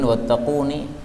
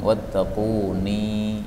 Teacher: ini ninya boleh pendek, boleh juga panjang